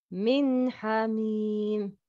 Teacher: Nun sakin followed by ha. The sound of nun sakina is clear.